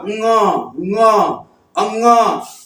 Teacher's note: कंठ से भी नाक से भी कंठ से भी नाक से भी दोनों का सहायता लेकर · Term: कंठ अनुनासिक